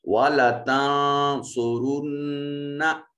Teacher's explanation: स्वाद और रा दोनों को मुफख्खम पढ़ा जाएगा